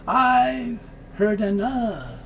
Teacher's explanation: The D moves over, so you hear heard.